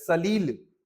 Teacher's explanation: सलील ली में जोर दे रहे हैं।